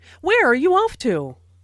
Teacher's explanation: notice the falling intonation since this is an information question not a yes no question